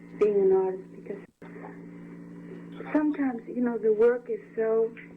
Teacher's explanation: A high voice and like a bit breathy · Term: Hollywood accent